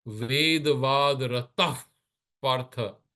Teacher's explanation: if the visarga is followed by the pa, the lip will give the visarga sound